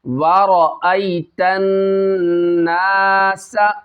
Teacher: را کو پر کرنا ہے، موٹا کرنا ہے، را کے اوپر زبر ہے۔ آئی یہاں دیکھیں یا لین ہے، اس کو کھینچنا نہیں ہے۔ · یہاں پہ ہم نے نون میں جو ہے غنہ کرنا ہے کیونکہ یہاں پہ نون مشدد ہے، نون کے اوپر 3 دندان والی شکل آ رہی ہے، اس میں ہم نے غنہ کرنا ہے۔